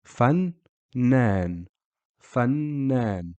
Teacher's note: You can hear the N sound or the Noon pronounced twice. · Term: shaddi